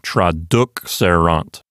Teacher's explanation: So the accent moves over to the antepenult, and it sounds like traduxerant. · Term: stress accent